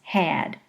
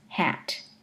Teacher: There's a measurable longer duration of the vowel in had compared to the vowel in hat.